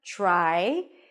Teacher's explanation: Again, the T sounds a little bit like a ch sound or a lot like a ch sound.